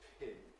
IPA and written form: pʰʰɪn (pin)